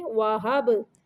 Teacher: कलकला हरफ है बा, यानी इसको साकिन करते हुए हरकत देंगे